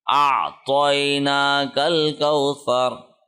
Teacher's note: وقف کی صورت میں را کا جو زبر ہے جزم میں تبدیل ہو جائے گا